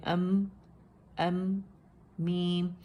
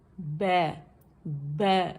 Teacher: جب دونوں ہونٹوں کو با کی نسبت ہم کم سختی سے یعنی توسط کی صفہ دیتے ہوئے ملائیں گے تو حرف میم ادا ہوگا